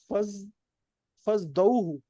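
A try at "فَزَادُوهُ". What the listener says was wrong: نہیں نہیں نہیں نہیں، فا الگ اور باقی الگ ہے. ہاں زادہ زادہ زادو، فزادوہ، قال قال قالو، اس طرح.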